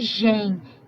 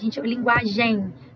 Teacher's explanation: E esse em no final, eu tô fazendo uma nasalização.